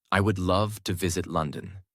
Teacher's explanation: The word love gets the extra weight. This creates a natural accent.